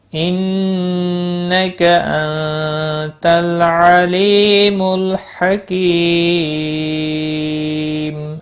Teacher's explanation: وقف کی صورت میں میم ساکن پڑھا جائے گا، وقف بالاسکان ہوگا، 3 سے 5 الف کے برابر کھینچ کر وقف کریں گے